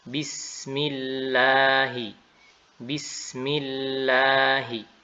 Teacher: Selain itu maka lam itu dibaca tipis